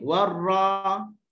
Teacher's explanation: Dia akan terangkat pangkal lidah. Sebab dia jadi tebal.